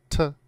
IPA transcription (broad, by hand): t